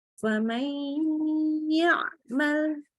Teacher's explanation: nun sukun ketemu ya, maka langsung lebur ke ya dengan diberi gunnah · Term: idgham bil gunnah